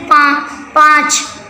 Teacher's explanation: इसे मुख मतलब मुंह हमारा, और नाक, ठीक है, नोज से बोला जाता है। मतलब अनुनासिक को हम मुंह से या नाक से बोला जाता है।